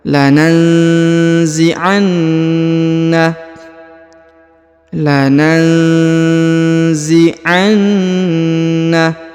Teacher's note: Huruf na ditahan dan ditekan, kemudian didengungkan karena di atasnya terdapat tanda tasdid ya, atau penekanan.